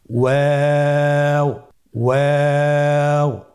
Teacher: ওয়াও হরফটি উচ্চারণের ক্ষেত্রে বারিক হবে এবং 3 আলিফ টেনে পড়তে হবে।